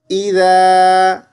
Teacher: ذال کو زا نہیں پڑھیں گے، زبان تھوڑی سی باہر نکالیں گے